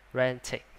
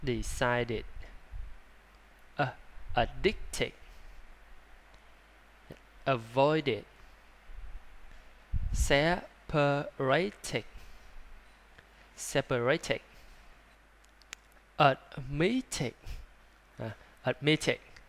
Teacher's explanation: động từ ed kết thúc là t và d thì sẽ đọc là it